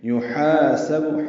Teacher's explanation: الف مدہ ہے، دو حرکات لمبا ہے